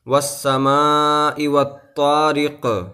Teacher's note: جب رکیں گے تو قاف کے نیچے جو زیر ہے وہ ساکن ہو جائے گا، یعنی قاف ساکن ہو جائے گا اور قاف کے اوپر قلقلہ ہوگا